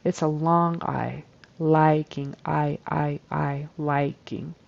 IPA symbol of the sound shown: aɪ